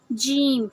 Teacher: جیم کو ہم زبان کے سینٹر سے ادا کرتے ہیں